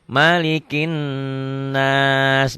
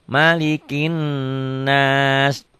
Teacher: karena n-nya double jadi ditahan, ini yang dikatakan gunnah. Malikin, n-nya juga kalau begitu harus banyak ya berarti ya.